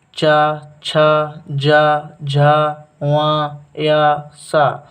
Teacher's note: जिनके उच्चारण में जीभ का पिछले भाग को तालु से संघर्ष करना पड़ता है उसे तालव्य कहते हैं